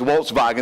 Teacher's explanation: you know Germans they pronounce the W's with a V